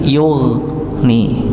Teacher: Jadi dialirkan dalam keadaan tebal. Huruf gha ini termasuk huruf tebal.